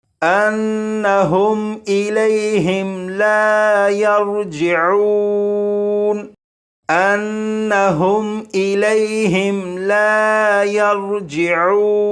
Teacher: یہ نون مشدد ہے، نون مشدد پر غنہ کریں گے